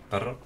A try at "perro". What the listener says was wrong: Perro. You have struggled with that too, the R. Perro. Brr. There we go.